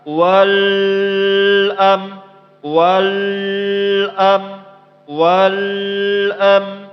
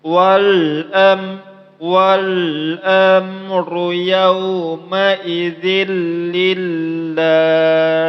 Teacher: Di sini ada wal, walnya itu jangan terlampau lama. Jangan dibaca wal am, wal am, wal am.